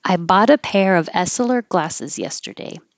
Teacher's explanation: the T connects and makes a D. Bought a pair of, and the next word after of starts with a vowel, so you do keep the V and it will connect.